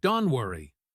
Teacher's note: The T at the end of don't usually disappears completely when it is followed by a consonant sound like the W in worry.